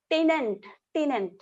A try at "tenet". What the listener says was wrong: Tenant. Tenet. tenant. It's tenet. N-E-T. Tenet.